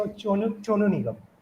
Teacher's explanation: They pronounce in place of saw, they pronounce chaw. We say Sonu Nigam, they say Chonu Nigam.